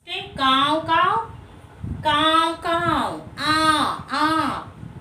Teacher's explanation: इन वर्णों का उच्चारण करते समय हवा नाक और मुंह दोनों से बाहर निकलती है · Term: अनुनासिक